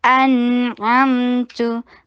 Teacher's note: हमजा शदीद, नून के ऊपर तवस्सुत का टाइम दीजिए क्योंकि ये इजहार हो रहा है यहाँ। अनअमतु अमतु आइन को हलक से अदा कीजिए, फतहा के लिए शॉर्ट रखिए और मीम के ऊपर तवस्सुत का टाइम दीजिए।